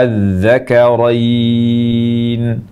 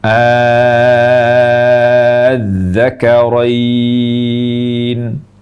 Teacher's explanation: kita baca hamzah panjang. Hamzah panjang dan panjangnya harus 6 harokat. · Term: mad lazim kalimi mutsaqqal